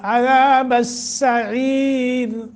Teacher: سین صرف محض سیٹی کے ساتھ اور بریک پڑھا جاتا ہے